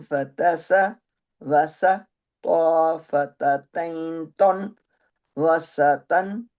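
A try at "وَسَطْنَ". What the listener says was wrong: अच्छा, ये सीन थोड़ा सा आपका मोटा हो गया। वसतन।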